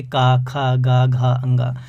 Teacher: कंठव्य जो व्यंजन होते हैं इनको जब उच्चारित करते हैं तो कंठ का प्रयोग ज़्यादा होता है